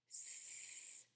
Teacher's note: put your hand on your throat so this time you feel no vibration right that tells you that this is a voiceless consonant